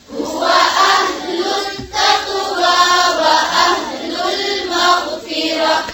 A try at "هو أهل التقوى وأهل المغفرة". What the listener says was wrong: अहलुल तक़वा की आवाज आ रही है, ध्यान से पढ़ें फिर से।